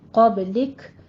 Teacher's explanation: یہاں پہ کاف پہ تھوڑا سا حمز کرنا ہے